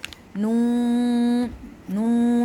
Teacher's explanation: ناک سے آٹومیٹکلی آواز آتی ہے کیونکہ اس کے اندر غنہ کی صفت موجود ہے